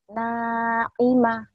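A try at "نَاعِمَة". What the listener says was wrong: ainnya gak keluar Naima gitu Naima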